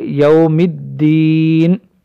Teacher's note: مالکی، مالکی غلط ہو جائے گا، مالکی یوم الدین، دال مشدد ہونے کی وجہ سے یہاں پر تشدید کا اظہار کریں گے،